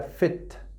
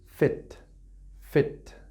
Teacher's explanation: No es I, nosotros pensamos en español que es una I definida, y no es una I definida, es una I tirando una E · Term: I corta